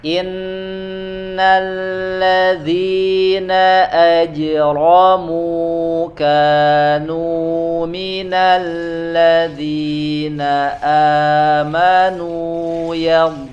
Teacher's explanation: Inna nun bertasydid ya, ziyadatul gunnah ditambah dengungnya.